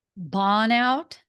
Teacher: it sounds like you're leaving out the R in burn.